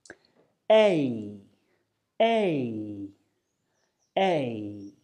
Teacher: because they're a combination of two vowel sounds like I said so as you say a your mouth will start on the position of the E and finish on the position of the I · both sounds are what we call unrounded so we keep our lips stretched out like we're smiling but our mouth will close a little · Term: diphthong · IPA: /eɪ/